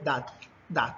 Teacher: Por ejemplo, si nosotros tratamos de decir humanidad, vamos a ver que esa última parte, dat, de la D, la punta de la lengua toca los dientes superiores